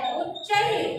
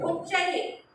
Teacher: जो विसर्ग है उसको ह की तरह प्रोनाउंस करते हैं